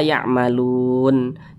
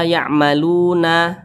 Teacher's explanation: huruf nunnya itu kita sukunkan atau kita matikan ketika kita membaca al-qur'an